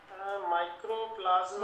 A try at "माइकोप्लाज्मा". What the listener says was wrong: माइक्रो नहीं, माइकोप्लाज्मा। माइकोप्लाज्मा,